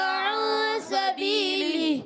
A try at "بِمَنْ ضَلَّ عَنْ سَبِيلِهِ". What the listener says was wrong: ابھی بھی آئے بیمن ضل، ضاد کو پر نہیں کرے، ضاد پر کرنا ہے پیارے بچوں. بیمن ضل عن سبیلہ